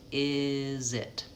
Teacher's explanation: Then that Z sound kind of goes onto the word it. We link is and it.